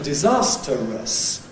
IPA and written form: dɪˈzɑːstərəs (disastrous)